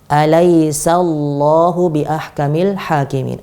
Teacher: huruf sin dia huruf tipis, di sebelahnya ada lafzul jalalah, yang mana lafadz Allah ini adalah lafadz tebal. Jadi harus kita hati-hati, sinnya jangan sampai ikut-ikutan tebal.